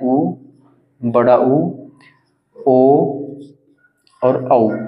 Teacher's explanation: वृत्ताकार स्वर होते हैं जिनमें होठों को गोल करके बोला जाता है इनके होठों को गोल मुख को गोल करके बोला जाता है